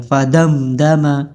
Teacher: میم ساکن کے بعد دال آیا ہے تو اس میں غنہ نہیں ہوگا، اس کو فوراً پڑھا جائے گا فدمدم.